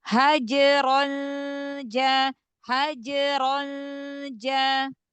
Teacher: Tipis kan Jim huruf tipis jadi ikfanya tipis